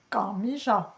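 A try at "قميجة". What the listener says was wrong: Non, plus bas. Non, là, tu le dis de là. Non, il faut y aller plus profond.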